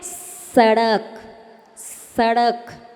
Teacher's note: दंती सा यानी जिसमें दांत से बोले